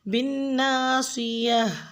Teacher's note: بالناصیہ میں آپ نے نون مشدد پہ غنہ کرنا ہے، صاد کا مخرج آپ نے پورا ادا کرنا ہے۔ گول تا پہ جب وقف کریں گے تو ہا ساؤنڈ پہ کریں گے